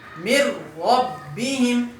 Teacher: ادغام بلا غنہ، یعنی وہاں پر غنہ نہیں کریں گے، صرف ادغام کریں گے